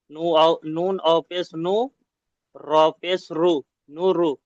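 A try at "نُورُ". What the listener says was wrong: জি না, দেখেন ও মাদ্দাকে একালিপ টান দিতে হবে। নুন ও পেশ নু, র পেশ রু।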